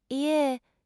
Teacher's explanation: Pronounce it ie with the emphasis on the first syllable.